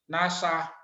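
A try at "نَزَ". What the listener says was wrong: Naza. Sa-nya ke za. Za-nya ke sa.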